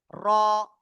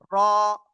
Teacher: জিহ্বার আগার পিঠ তারপর আবার উপরে তালুর সাথে লাগিয়ে আমরা এই অক্ষরটা উচ্চারণ করব